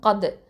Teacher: இந்த காஃப் அப்படிங்கிறது வந்து அக்கசல் லிசான் அப்படின்னு சொல்லுவோம். அதாவது அடி நாவிலேருந்து வரும். தால் சுக்கூனுங்கும் போது இது இந்த தால் வந்து தரஃபுல் லிசான், நுனினாவை எழுத்து.